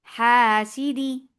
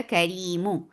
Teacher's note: नून साकिन की आवाज को गिरा देंगे, तो हासिदिन बन जाएगा हासिदी, हासिदी।